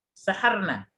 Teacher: Yang benar nunnya pendek, saharna, bukan saharona ya.